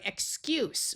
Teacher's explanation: Here we have the word excuse with the unvoiced S sound.